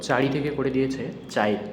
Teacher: পরের ইকার বা উকার আগে উচ্চারিত হওয়াকে আমরা কি বলবো, অপিনিহিতি বলবো